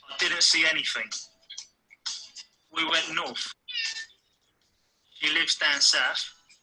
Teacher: The unvoiced th sound becomes a f sound.